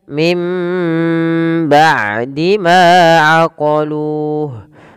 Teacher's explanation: pada lafal nun mati bertemu ba, ini suaranya nunnya dimasukkan ke huruf mim, diganti karena di sini kemudian ditandai dengan mim kecil menandakan ini awalnya min.